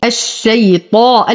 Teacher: أفخم الطاء بأعلى درجات التفخيم وأعتني به دائما